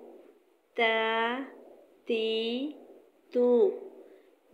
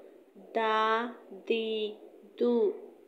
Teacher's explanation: زبان کی نوک جب اوپر سامنے والے دو دانتوں کی جڑ سے لگے، اس سے تا، دال، طا ادا ہوتے ہیں۔ زبان کی نوک ثنایا علیہ کی جڑ سے لگنے سے تا، دال اور طا ادا ہوتے ہیں۔ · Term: حروف نطعیہ